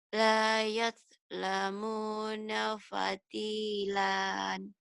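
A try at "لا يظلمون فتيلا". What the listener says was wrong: La yuz, bukan yad. Yuz. La yuzlamuna fatilan.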